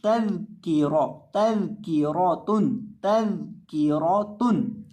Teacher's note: दाल के अंदर आपने सीटी पैदा नहीं करनी, तज़किरा नहीं पढ़ना, तल की रौतुन तल की रौतुन।